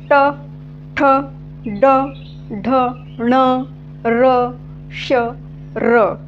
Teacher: किंवा री तर ज्या ज्या वेळेस आपण या वर्णांचा उच्चार करतोय आपल्या जिभेहीचा शेंटा कुठे स्पर्श होतोय तर या मूर्धाला स्पर्श होतोय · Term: मूर्धन्य वर्ण